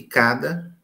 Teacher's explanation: E cada, esse D, é uma consoante oclusiva também alveolar.